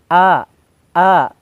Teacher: ini keluar dari tenggorokan bagian bawah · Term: hamzah